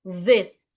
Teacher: For the voiced TH sound, put your tongue in between your teeth and make vibration